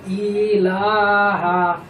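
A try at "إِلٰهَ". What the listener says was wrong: তোমার লাটা ঠিক হয়েছে, কিন্তু এখানে তিন লাই পাত আছে, কিন্তু তোমার মাত পড়াটা তিন লাই পরিমাণ হয় নাই।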